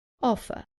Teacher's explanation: Remember that in British English, the R at the end is not pronounced.